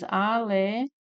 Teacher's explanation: A sílaba mais forte é o tó. Nós temos aqui uma paroxítona terminada em ditongo crescente, né?